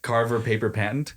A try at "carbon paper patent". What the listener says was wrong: It's not Carver, it's carbon.